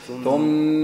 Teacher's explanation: ما تقولش ثم تعملش مد أعمل غنة في الميم وبس